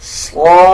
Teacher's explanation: جو فا کے اوپر کھڑا زبر ہے اس کو بھی 1 سیکنڈ لمبا کر کے پڑھا جائے گا